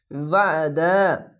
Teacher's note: আইনটিকে মোটা করে গলা চিপে পড়বেন